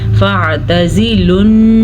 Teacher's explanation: یہ آواز مخصوص ناک میں جو آتی ہے یہی غنّہ ہے